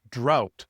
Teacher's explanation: in Canadian English, this u sound is a little bit shorter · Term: OU sound